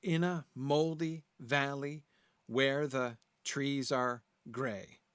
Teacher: 6 total beats, though there's a stress on the first and last syllable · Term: trochaic hexameter